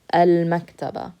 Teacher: you use your lips to pronounce meme you don't use your tongue